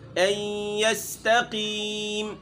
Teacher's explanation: یہاں موٹا تو ہے قاف لیکن زیر کے آنے کی صورت میں یہاں زیادہ موٹا نہیں ہوگا